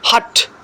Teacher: With the help of vocal cords, the sound is produced by friction. Hat. You can see the sound h here. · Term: glottal